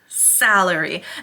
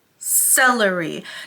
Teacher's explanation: open ah salary sound versus the word celery